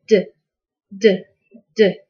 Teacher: you should be able to feel a vibration on your neck when you say d